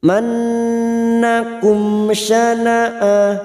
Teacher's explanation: Yajriman nun yang bertasdid gunna mustadadah kita dengungkan 3 harokat. Mannakum mim sukun bertemu shin idhar safawi, mim sukun dibaca jelas tanpa mendengung.